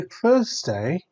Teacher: your tongue is between your teeth and you're trying to blow air out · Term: soft TH sound